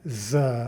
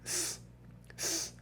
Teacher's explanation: the vibration effect you get not Z but s s right so we say that Z and S are a voiced unvoiced pair